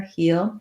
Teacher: It's almost like two syllables, heel, heel. When I go quickly and glide, I don't necessarily have a strong glide y sound in there